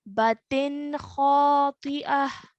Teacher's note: This is a ta al-marbuta, so it makes the sound of a ta.